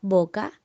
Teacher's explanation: la B es inicial y su articulación es bilabial